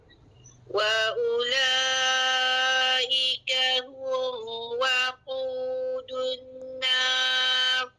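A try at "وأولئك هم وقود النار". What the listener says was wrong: Wa ula. Jadi u tu tidak dipanjangkan. Bulat apa yang bertanda bulat tu tidak memanjangkan hukum mat asli, bukan wa ula. Jadi bacaan satu harakat. Wa ula kila hukumnya mat wajib 4 ataupun 5. Dunna tu wajib al-gunnah, kena dengar 2 harakat tu.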